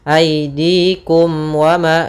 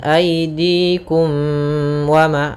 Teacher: mim mati bertemu dengan huruf wau maka dia dinamakan dengan izhar syafawi suara mimnya harus jelas tanpa ditahan